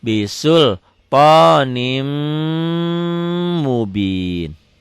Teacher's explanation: Ini gunnah ya. Gunnah itu sifatnya dengung ke hidung, ditahan ada madnya, dan double karena ada tanda pendobel tasdid.